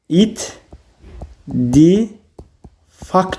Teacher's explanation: Q da k-ya çevrildi.